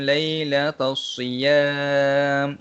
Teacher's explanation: alif lam ini dia tidak dibunyikan. Dan yang akan disebut adalah perkataan selepasnya sahaja. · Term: alif lam syamsiyah